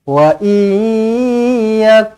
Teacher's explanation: Nun kosong bertemu dengan ya. Idgham ma'al gunnah. Jumpa dengan huruf ya.